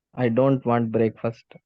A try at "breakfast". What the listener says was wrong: ஓ பிரேக்ஃபாஸ்ட், அது பிரேக்ஃபாஸ்ட் படிக்க கூடாது, பிரேக்ஃபாஸ்ட். பிரேக்ஃபாஸ்ட் ரெண்டா உடைச்சிட கூடாது. பிரேக்ஃபாஸ்ட் ஒரே வார்த்தை, 2 வார்த்தை ஒரே வார்த்தை.